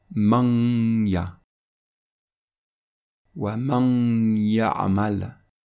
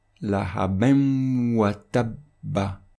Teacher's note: le son est proche du son français en, un et on, avec bien sûr un nasillement de 2 temps qui doit être renforcé par un shadda.